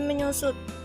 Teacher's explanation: konsonan S diluluhkan dengan nasal NY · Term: peluluhan fonem